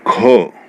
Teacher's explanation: ख में हमारे मुंह से ज़्यादा वायु निकलती है, तो ये महाप्राण हुआ।